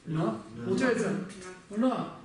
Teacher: язык упирается куда? В твердое небо и произносится на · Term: церебральная